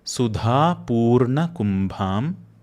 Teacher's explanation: Dha is a mahaprana sound and bha is also a mahaprana sound.